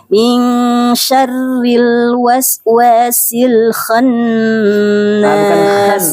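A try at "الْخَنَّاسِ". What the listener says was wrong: Bukan khan tapi kho Khannas. bukan sin, bukan sya.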